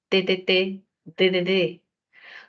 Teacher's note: La lengua en los dientes, dentales